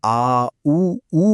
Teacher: आ, ऊ बोलते वक्त जीभ का पिछला हिस्सा काम करता है